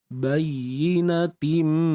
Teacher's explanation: Okey, kat sini hukumnya idgham bi ghunnah. Kita kena masukkan tanwin ke dalam mim dengan masuk yang sempurna. Bayyinatim, dengung pun dengung yang sempurna.